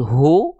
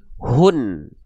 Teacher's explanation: Jadi bukan cuman u-nya aja, tapi ada konsonan n-nya di ujung. Maka hak besar di sini kita baca bukan hu, tapi kita baca menjadi hun. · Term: dhammahtain